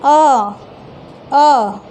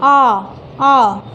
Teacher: जैसे कि हम बोलते हैं अ तो उतना बल नहीं लगा, लेकिन बोलते हैं आ तो पूरा मुंह खुल जा रहा है, जबड़े पे जोड़ पड़ रहा है